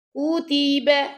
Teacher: کاف پیش کو جب پڑھیں گے تو آپ کے لپس گول ہو جائیں گے، اور تی پڑھنا، کو تے نہیں پڑھنا، ٹھیک ہے.